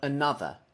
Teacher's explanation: the stress is on the second syllable but the first syllable and the last syllable are both completely unstressed